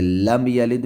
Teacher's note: یہاں میم ساکن کے بعد نہ با ہے نہ میم ہے تو یہاں اظہار شفوی ہوگا